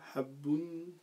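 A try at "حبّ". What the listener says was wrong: Non, donc t'as juste sur la lettre, mais faux sur la voyelle. C'est pas ou, la voyelle c'est une fatha, c'est le son A. Donc tu doubles, hein, parce qu'il y a le W là, la shadda.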